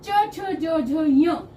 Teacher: च बोलने के लिए हमें जो ऊपर मुख के ऊपर की जो छत है उसे छूकर बोलते हैं तो उसे हम तालू बोलते हैं तो च छ ज झ